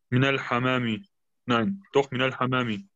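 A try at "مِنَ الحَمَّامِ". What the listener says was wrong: Die Schädde beachten. Die Schädde beachten. Genau, Min al-Hamami. Weil wenn du Hamam sagst, ohne Schädde, dann sagst du von der Taube.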